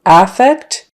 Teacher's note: if you pronounce it with the stress on the first syllable affect it means a very flat countenance not much expression not much mood it's often used by I